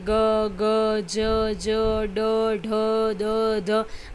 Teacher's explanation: ઘોષ ધ્વનિ એટલે કે નાદતંત્રી સહેજ વધુ કંપનની અવસ્થામાં હોય ત્યારે તેને તે ધ્વનિ ઉત્પન્ન થાય તેને ઘોષ ધ્વનિ કહે છે.